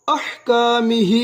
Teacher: 4 حرکات لمبا ادا کریں گے. چھوٹی مد ہے